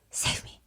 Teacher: it sounds like a very breathy, low, save me. You can barely hear him. You can see his lips moving.